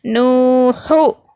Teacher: زبر زیر پیش کو حرکت کہیں گے، تو اس کو ہم جلدی پڑھیں گے کیونکہ حرکات کو کھینچتے نہیں ہیں بلکہ جلدی پڑھتے ہیں، تو نو کو کھینچیں گے ایک الف کے برابر اور ہا کو جلدی پڑھیں گے۔ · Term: واو مدہ